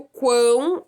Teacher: o quão é um tritongo nasal, porque ele é nasalizado, sai pelo nariz